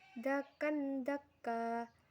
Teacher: Pada ayat 21, dakan daka terdapat 2 bacaan, yaitu ikfa karena huruf kaf berharokat fathah tanwin bertemu huruf dal. Cara membacanya samar dengan dengung dan ditahan selama 3 harokat. Dan hukum bacaan yang kedua yaitu mad iwad karena huruf kaf berharokat fathah tanwin dan di wakof. · Dan hukum bacaan yang kedua yaitu mad iwad karena huruf kaf berharokat fathah tanwin dan di wakof. Cara membacanya tanwin dihilangkan dan panjangnya 2 harokat.